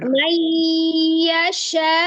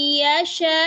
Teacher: Kalau yang tadi di tengah mayyasha'u, kalau ini mayyasha, hamzahnya disukunkan maka berlaku nabar ya, atau ditekan atau ditinggikan